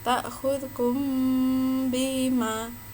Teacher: Ada mim sukun bertemu dengan ba. Ini dinamakan ikhfa syafawi. Cara membacanya samar.